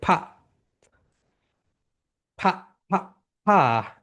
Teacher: মনে আছে যখন এ প্রোনাউন্সিয়েশন করবে উপরের দাঁত নিচের ঠোঁটের সঙ্গে টাচ করে